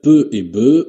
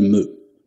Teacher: supprimer les occlusives labiales peu et be au profit de la nasale me